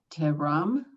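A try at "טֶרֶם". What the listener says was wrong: It's the same vowel as the S, so why are you changing it for the second letter? Terem. You changed it and it's the same vowel.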